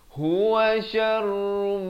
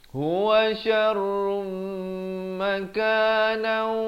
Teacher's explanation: Huwa syarrum, di sini idgham bi gunnah, daripada syarrun jadi syarrum, dengungkan 2 harakat. Huwa syarrum makanan, masuk berserta dengan 2 harakat.